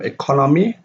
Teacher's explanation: The stress of economy is on the second syllable